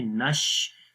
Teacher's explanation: آواز آئے گی، نون کو شین کے ساتھ ملائیں گے، نش، شین کی آواز منہ کے اندر پھیل جائے گی ، پھیل کر آواز آئے